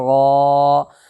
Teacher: हाँ, उसी तरीके से गाऊन, देखो गैन अलिफ ज़बर गा, अलिफ मद्दा होगा इसलिए कि अलिफ से पहले गैन के ऊपर ज़बर है, इसलिए अलिफ मद्दा होगा। अलिफ मद्दा को एक अलिफ के बराबर खींच करके अदा करेंगे